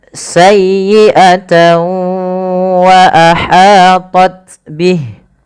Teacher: tekan di huruf ya-nya karena dia ya tasdid